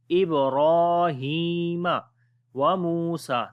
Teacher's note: Ra we read in heavy sound, and also we long due to standing fatha.